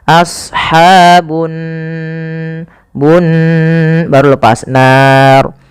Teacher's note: Di sini ada gunnah. Pada lafal nun, cara membacanya yaitu ditahan suara nunnya.